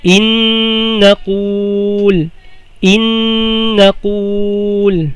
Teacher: Bali kapag didiretso ka, dapat may idgham at saka gunna.